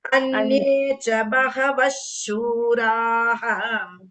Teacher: Next, after Visarga, it is Shura. So Ish sound should be heard properly.